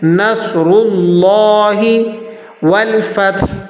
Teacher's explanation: صاد کو بھی آپ نے موٹا پڑھنا ہے اور را کو بھی موٹا پڑھا جائے گا۔ را کے اوپر زبر یا پیش ہو تو موٹا پڑھتے ہیں، را کے نیچے زیر ہو تو را کو باریک پڑھا جاتا ہے۔